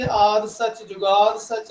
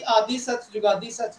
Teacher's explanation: ए आद और जुगाद शब्द भावें छोटी ई दी साउंड नहीं आ रही, परंतु फिर भी नियमा सिद्धांतों के तौर पर आद सच जुगाद सच, आद और जुगाद उत्ते असीं आदि सच जुगादी सच नहीं पढ़ते।